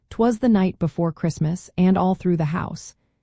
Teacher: If you consistently find pairs of unstressed syllables followed by a stressed one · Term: anapestic verse